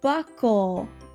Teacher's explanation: Buckle has the lazy schwa at the end.